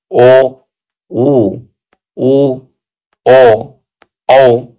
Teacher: जीभ का पिछला भाग सामान्य स्थिति से उठता है उसे पच स्वर कहते कहे जाते हैं।